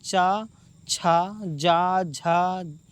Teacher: इन पांच वर्णों के उच्चारण में हमारी जीवा हमारे तालू को छूती है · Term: च वर्ग